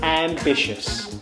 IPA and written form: æmˈbɪʃəs (Ambitious)